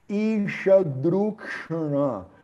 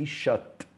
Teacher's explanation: por causa do sandhi, ele vira o T, vira D, né? O T de tatu vira D de dado.